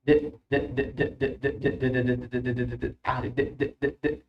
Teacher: راح تحس اكو فويس، اكو فايبريشن، اكو اهتزاز يصير بالفوكال كوردز بالحبال الصوتيه